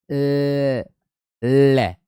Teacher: केवल और केवल एक बार ही 'ल' ध्वनि पार्श्व होती है। आप स्वयं इसका उच्चारण करके देखें। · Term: पार्श्व ध्वनि